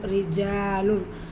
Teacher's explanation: ரா கெஸ்ரா பேச்சு வந்திருக்கு, மெல்லினமாக ஓதணும்